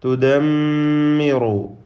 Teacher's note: മീം മുഷദ്ദദ, ശദ്ദ നൽകപ്പെട്ട മീമിനെ മണിക്കണം